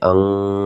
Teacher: apabila ada nun sukun bertemu dengan huruf ka. Dan cara bacanya ini ketika terbacanya ang gitu ya teman-teman ya, ang, maka dinamakan hukum bacaan ifa hakiki.